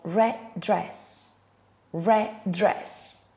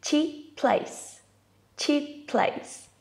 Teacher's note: when there's a consonant sound at the end of a word and the same one at the beginning of the next one, we pronounce it only once as a way to link both words together.